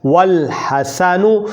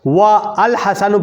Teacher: واو کو آگے لام سے ملا لیا جاتا ہے اور پڑھا جاتا ہے والحسن، اور پڑھنا غلط ہو۔